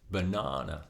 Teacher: in the word banana we stress the second syllable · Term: syllable stress